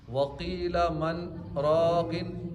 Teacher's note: من پہ آواز رکے گی، سانس جاری رہے گی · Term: سکتہ